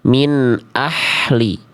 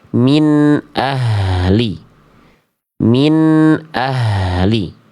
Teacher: Makhraj, tempat keluar dari H kecil itu dilafalkan dari tenggorokan tengah, Bunda.